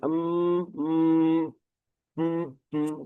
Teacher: M kalau kita mengucapkan m seperti itu tentunya ee rongga hidung yang berperan ketika pengucapan huruf mim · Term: huruf rongga hidung